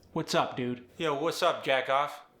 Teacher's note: Notice the lack of articulation. The pitch of the Pittsburgh accent is somewhat even. However, there is a rise at the end of sentences, or after a question.